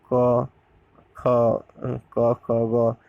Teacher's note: एक क वर्ग को कंठ से उच्चारण किया जाता है।